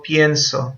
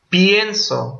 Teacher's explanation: Entonces la lógica es, pienso, pasó la tónica para la anterior. Es como si la E no aguantara el peso de la sílaba tónica y se dividiera en dos. Y cuando no es tónica esta parte, no diptonga.